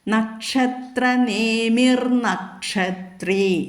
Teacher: നേമി എന്ന് ഒരു നക്ഷത്ര എന്നുള്ളതും നേമി എന്നുള്ളതും രണ്ടു വാക്ക് ആയതുകൊണ്ട് അവിടെ നമുക്ക് ന എന്നുള്ളത് ദന്ത്യം ഉച്ചരിക്കാം